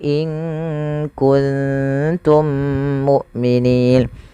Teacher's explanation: Kemudian Pada lafal mim mati bertemu mim, adanya dua mim yang saling berdekatan, maka cara membacanya mim yang satunya dimasukkan kepada mim yang kedua dan ditahan suara mimnya. Dan inilah yang kita namakan dengan idgham mim apabila ada huruf mim bertemu dengan mim yang serupa.